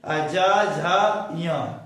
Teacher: इस प्रकार सघोष यानी जिसमें कंपन हो, अगर स्वर यंत्र में ध्वनि का कंपन हो रहा हो तो उसको बोलेंगे क्या? सघोष। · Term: सघोष व्यंजन